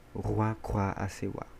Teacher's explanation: Quando a gente vier uma sequência de OI ou EOI, o som é de UA.